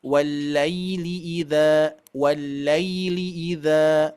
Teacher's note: ujung lidah menyentuh ataupun menempel ke gigi seri atas tapi menempelnya bukan bertenaga ya E kita ringankan karena ada rukhwah harus mengalir suaranya gitu Ya